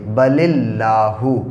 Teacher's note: اس لام کے نیچے زیر ہے، اس لیے یہ اللہ کا لام باریک پڑھا جائے گا، یعنی سمپل پڑھا جائے گا، اس کو موٹا نہیں پڑھیں گے